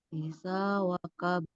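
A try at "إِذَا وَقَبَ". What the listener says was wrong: Nah, qalqalahnya tetap dibaca jelas dia, Bu ya. Dia nggak samar ya. Waqab.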